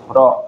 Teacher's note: Nah, ujung lidah bergetar. Ah, ujung lidah bergetar ada pada huruf ro